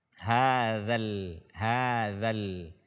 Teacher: Kemudian kesalahan berikutnya tidak melafazkan huruf dzal dengan benar atau tidak keluar dari makhrajnya, yaitu ujung lidah disentuh oleh ujung gigi seri atas kita